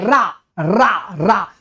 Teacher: हवा जबान पर ऐसे लुढ़कती हुई चलती है इसलिए उसको बोलते हैं लुंठित ध्वनि